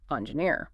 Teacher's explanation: And it's also important to focus on pronouncing the word engineer clearly with the stress falling on that final syllable